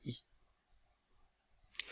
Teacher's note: langue est en avant à l'intérieur de la cavité bucale c'est une voyelle fermée c'est-à-dire que la langue a son dos relevé et qu'elle ferme le passage de la cavité bucale · c'est une voyelle orale c'est-à-dire que l'air ne passe que dans la cavité bucale que le voile du palais est relevé pour empêcher l'air de